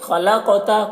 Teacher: خلقتا، قاف کو پر پڑھیں گے اور قاف میں قلقلہ ہوگا کیونکہ قاف حروف قلقلہ میں سے ہے اور اس کے اوپر جزم ہے